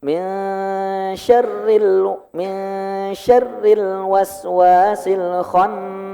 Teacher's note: Al-khannas diingat nunnya bertasydid jadi agak ditahan dulu.